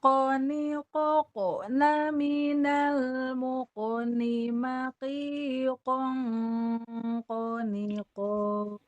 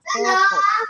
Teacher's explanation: Kan ini dengung tebal ya. Mulutnya tidak ditarik. Terus mantulnya mantul tebal. Kenapa? Karena kof huruf tebal. Dengungnya dengung tebal.